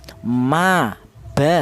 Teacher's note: itu melibatkan kedua bibir, baik bibir atas atau bibir bawah berperan, akan tetapi rapat dulu